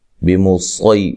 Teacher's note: یہ جو سین ہے یہ سین کی آواز نہیں آنی چاہیے، اس میں خالص صاد کی آواز آئے گی